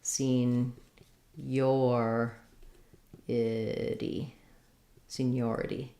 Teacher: Your stress is on seen. Senior versus seniority, we change to the stress on the second syllable. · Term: second syllable stress